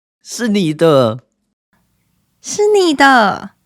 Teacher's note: even under excitement, native speakers still maintain the third tone characteristic, which is low.